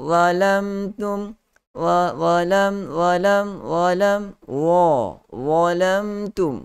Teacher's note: Keluarkan hujung lidah, sentuh pada dua gigi kacip bahagian hadapan di bahagian atas itu. Dalam masa yang sama, kita perlu juga memberi sifat yang tebal kepada huruf za, iaitu sifat isti'la dan sifat itba' yang begitu tebal.